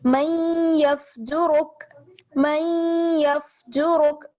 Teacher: تھوڑی سی جو ہے نون کی آواز باقی رہتی ہے تو ہم میم کو یا سے ملائیں گے اور ہلکی سی آواز جو ہے وہ نون کی باقی رہے گی